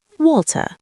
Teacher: The R disappears. That's called non-rhotic speech.